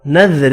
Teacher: را کو باریک پڑھیں گے 2 زیر کی وجہ سے اور تنوین کا اخفا ہوگا